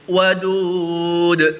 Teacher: Jadi da-nya itu dipantulkan. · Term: qalqalah kubra